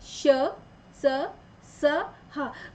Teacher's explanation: जब हम इनको बोलते तो हमारी जो आवाज है वो घर्षण से निकलती है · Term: ऊष्म व्यंजन